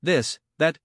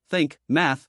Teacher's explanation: Voiced, this, that, feel the vibration. Voiceless, think, math, no vibration. Tip, stick out your tongue slightly between your teeth. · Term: The TH sound